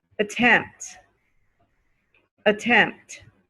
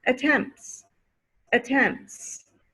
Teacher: you hear the t again at the end of attempt okay but if you add an s attempts attempts no more